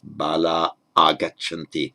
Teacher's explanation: we've got the long a with visarga followed by a vowel, so the visarga simply drops off